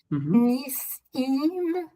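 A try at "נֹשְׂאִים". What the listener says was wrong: That's got a cholam there. It's nosim.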